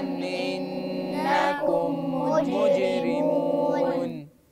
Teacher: ادغام الميم في الميم الميم عندكم ساكنه